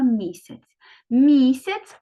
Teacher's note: перший звук м приголосний м'який позначаємо двома рисочками